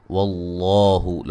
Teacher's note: واللہ لفظ اللہ کو خوب موٹا پڑھیں گے، اس سے پہلے حرف پر زبر ہے اور یہ مد اصلی ہے۔